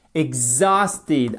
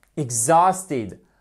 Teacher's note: accentuation sur la deuxième syllabe, ok? Exhausted.